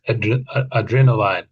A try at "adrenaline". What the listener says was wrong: I think, yeah, I noticed you said adrenal. I think you said adrenaline. Yeah, we say adrenaline. So we say lin, I think. Adrenaline, yeah. lin, yeah. adrenaline.